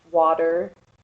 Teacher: i'm from central sylvania i pronounce it with a d